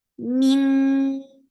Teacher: this is heavy ikhfa, so you're lifting your tongue up. Min qa, for fatha open your jaws, the sound is heavy.